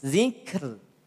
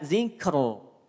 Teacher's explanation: ro sukun yang didahului oleh huruf yang sukun, kemudian didahului oleh huruf yang berharokat kasroh, maka huruf ro-nya menjadi tipis.